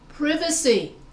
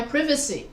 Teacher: british english they say privacy because they stress va instead of pri